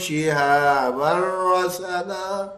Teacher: یہاں دیکھیں شہابر تنوین کے بعد را, یرملون کا را. یہ بغیر غننے والی مثال ہے